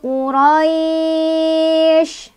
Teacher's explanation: Bertemu dengan shin, shin itu adalah huruf yang disukunkannya. Makanya, cara bacanya adalah selain dilunakan, juga lunaknya panjang. Boleh 2, boleh 4, boleh 6. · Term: madlin